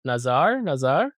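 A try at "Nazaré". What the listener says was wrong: It's Nazare. There should be an acute on an accent on the E.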